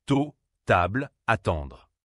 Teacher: En français, le thé est sec, précis. La pointe de la langue touche juste derrière les dents du haut. Contrairement à l'anglais, il n'y a pas de souffle fort après le thé. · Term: Le son T